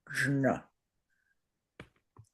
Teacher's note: So this is a creative way of combining the two. Now in the second compound consonant on the right, it's a j and a palatal n, jn. The first one is pronounced ksha, and the second one jn.